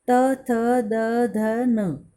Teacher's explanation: दंत्य। दांतों के मूल से बोले जाने वाले व्यंजन हैं